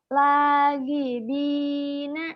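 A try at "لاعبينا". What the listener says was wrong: Itu bukan di, itu ba. Kalau dah kan nggak nyambung. Laibina.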